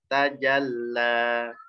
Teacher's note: La, 2 harokat saja. Kemudian lamnya ada tasydid, tekan ke lamnya.